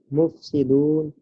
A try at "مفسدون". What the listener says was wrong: مکمل پڑھے نا، ساتھ نون کے اوپر زبر بھی پڑھے.